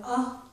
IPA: ə